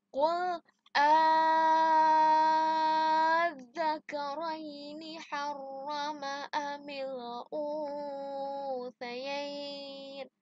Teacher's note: cara membacanya yaitu memanjangkan hamzah istifham sebanyak 6 ketukan lalu diidghamkan. Idgham berarti memasukkan kepada huruf berikutnya. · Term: mat farqi